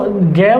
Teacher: ग का उच्चारण कंठ से होता है